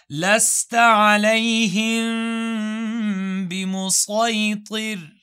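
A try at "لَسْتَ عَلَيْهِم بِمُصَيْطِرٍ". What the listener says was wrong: Go with the صاد. Seen is an opinion.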